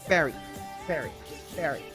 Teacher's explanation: For fairy, the F word, okay, the upper teeth is touching the lower lip.